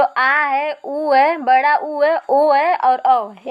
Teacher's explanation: ठीक, इसके बाद हम देखते हैं ये पश्च स्वर की संख्या, मतलब जो जीभ के पिछले हिस्से से उच्चारित किए जाते हैं उनको हम पश्च स्वर कहते हैं